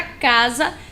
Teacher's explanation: o s quando está entre duas vogais tem o som de z